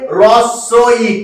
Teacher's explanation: হয়ের সঙ্গে রফলা যোগ হলে তখন হ সাউন্ডলেস হয়ে যায়